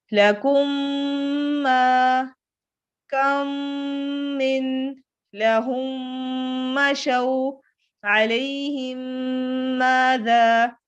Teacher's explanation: میم جو ہے وہ ہونٹوں سے ادا ہوتا ہے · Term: شفوی